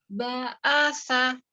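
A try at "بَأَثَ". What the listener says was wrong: Tidak sofir, tidak sa. Ya, tidak sa, tapi sa. Dia tidak memiliki sifat desis ya, karena itu nanti huruf sin ada ya. Nah, ini tidak ada sofirnya, dia cuma alham saja.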